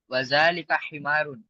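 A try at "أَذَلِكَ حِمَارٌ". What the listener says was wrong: वलिका वा क्यों लगा रहे हैं आप?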